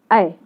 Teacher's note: ये आपको उच्चारित किए जाते हैं कंठ और तालु से। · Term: कंठ तालव्य